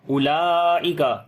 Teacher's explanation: ہے، اس کے بعد حمزہ اسی لفظ کے اندر آ گیا، مد متصل ہے، لمبا کریں گے 3 سے 4 الف کے برابر